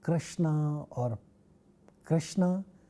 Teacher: ksha, which is a retroflex sound, and it appears in the words like Krishna or Krishna, which is a proper name.